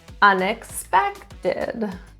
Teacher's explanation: stress is in the third syllable